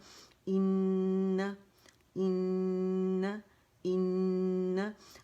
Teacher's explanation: اس وقت اس میں اکمل گریڈ کا غنہ کریں گے, فرسٹ گریڈ کا, دا موسٹ کمپلیٹ لانگسٹ غنہ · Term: حرف غنہ مشدد